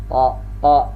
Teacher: ujung lidah dengan pangkal giginya di atas. Ta. Nah, dan dia pun juga termasuk syiddah, tertahan.